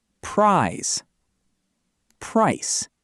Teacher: Feel the buzz in prize.